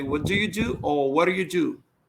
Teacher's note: Because D between vowel sound like R too.